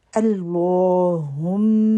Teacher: اللہم، میم مشدد، اور یہ دعا کے شروع میں آتا ہے لفظ، تو اس کو ایک دفعہ غور سے دیکھ کے اس کی تجوید ٹھیک کر لیں۔ اللہ کا نام ہیوی پڑھیں گے، اور میم پر شد ہے تو غنہ کریں گے۔